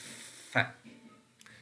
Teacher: the air is not absolutely stopped, but the lower lip is very close, absolutely close. Maybe it is touching the upper front teeth, but the air is continuously coming out. Such sound, or such structure which is used in the production of particular sounds, are called fricative sounds.